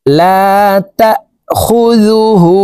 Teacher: এই হাকে ঠোঁট গোল করে এক আলিফ টেনে পড়ব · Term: উল্টা পেশ